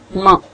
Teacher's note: इसमें you lower soft palate, आप अपने सॉफ्ट पैलेट को थोड़ा नीचे करते हैं और उसके बाद जो हवा है वो रेजोनेट करती है आपकी नेजल कैविटी को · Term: nasal sound